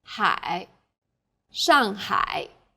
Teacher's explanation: a third falling then rising tone